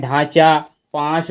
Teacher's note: ऐसी चीजें अनुनासिक बोली जाती हैं जो नाक और मुख के उच्चारण से बोली जाती हैं